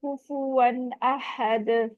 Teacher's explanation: कुफुवन, यहाँ पे तनवीन पे हम इजहार करेंगे, क्यों? क्योंकि आगे हमजा आ रहा है